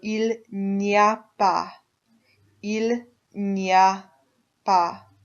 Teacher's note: Il n'y a pas is how that's pronounced. It all sounds like it's one long word all slurred together.